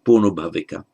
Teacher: more labialized lip sound, O, by attraction, as it were, so ponobhavika. In Sanskrit, you've got the punarbhava, so you get the conjunct bh, which normally you would expect to be double BH in Pali.